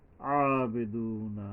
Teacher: আইন গলা চেপে এবং এক আলিফ পরিমাণ টানতে হবে দুনা এখানে এক আলিফ টাইনা যাইতে হবে এই ও এর উপরে